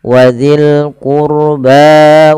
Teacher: tebalkan rnya karena huruf ro sukun di dalam domah.